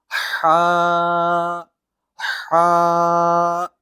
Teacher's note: ہا آپ نے ایسے ادا کرنا ہے جیسے گلے کا وسط ہوتا ہے، بیچ ہوتا ہے، جیسے کہ ہا ہا۔